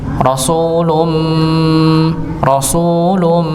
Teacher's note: jadi benar-benar keluar dari hidung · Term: gunahnya